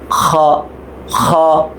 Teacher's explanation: খ গলার মধ্যে একটা খুশখুশ একটা ব্যাপার কাজ করবে